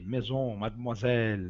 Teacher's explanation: O S geralmente em francês tem o som de Z. Maison, mademoiselle, né? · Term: S intervocálico